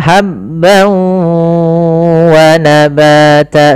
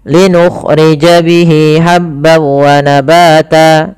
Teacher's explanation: masukkan tanwinnya ke waw, hilang suara nunnya menjadi suara waw, kemudian ditahan gunnahnya. Maka habban wa nabata sepanjang 2 harakat lebih sedikit.